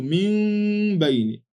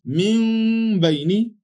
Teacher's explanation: Min bayni, without observing idhar or even idgham here, and also reminding ourselves that this nun has to be changed to a subtle mim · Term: al-iqlab